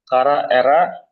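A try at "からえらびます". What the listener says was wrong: Kara, ini satu kata. Ini satu kata kerja semua. Satu napas.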